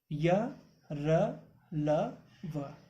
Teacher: इनके उच्चारण में जिह्वा मुख के किसी भी भाग को पूरी तरह स्पर्श नहीं करती है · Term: अंतस्थ व्यंजन